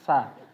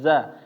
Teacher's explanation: Sin hamas ya, ada aliran udara